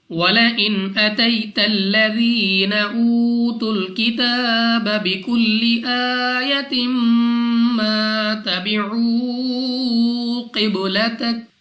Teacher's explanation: نون ساکن کے بعد حمزہ حروف حلقی میں سے ہے، اظہار کا قاعدہ ہے، بغیر غنہ کے ادا کریں گے. یا ساکن سے پہلے زبر یا لین بغیر کھینچے بغیر جھٹکے دیے پڑھا جائے گا یعنی جلدی سے.